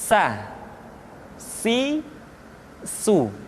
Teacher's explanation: Berikutnya huruf sa, diucapkan sebagaimana kita mengucapkan huruf sa, yaitu ujung lidah di antara dua gigi seri kita